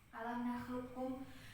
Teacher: Jadi kolkolanya sudah hilang. Bacanya alam nakhluqkum, masuk huruf kaf langsung, bukan dikolkolahin.